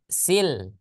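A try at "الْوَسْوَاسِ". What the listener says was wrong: Nah, jangan diturunkan lagi lidahnya. Jadi ketika lidahnya silho, silho. Nah, jadi dia tidak memantul. Kalau dia lidahnya diturunin lagi, maka akan ada sile, sile. Nah, berarti itu memantul dia. Maka kesalahan jari.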